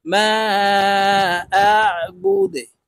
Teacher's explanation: ما أعبد، দালকে ওয়াকফের ক্ষেত্রে সাকিন করে ফেলবো। দাল যেহেতু কলকলার হরফ নিচের দিকে ধাবিত করে ধাক্কা দিয়ে উচ্চারণ করব।